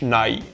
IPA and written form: ˈnɑɪ̯ (nay)